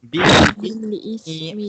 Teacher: Kita kena keluarkan juga lidah kita bila mana kita baca huruf sa ini walaupun dia mati. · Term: keluarkan lidah